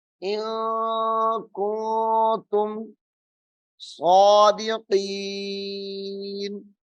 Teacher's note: ان کنتم ایسے بھی پڑھ لیں گے تو کوئی مسئلہ نہیں ہے، لیکن ہم چونکہ تلفظ کے ساتھ پڑھ رہے ہیں تو اس کو ان کنتم یعنی اخفا کر کے غنہ کر کے پڑھنا ہے.